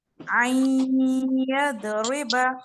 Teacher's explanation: नून साकिन के बाद या आ रहा है तो इदगाम करें और गुन्ना भी करें